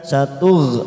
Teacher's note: ada huruf ghain sukun, hati-hati memantul karena bukan qalqalah, kita tahan